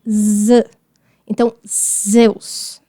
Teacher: Como se fosse um S na frente do Z, um som combinado. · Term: zeta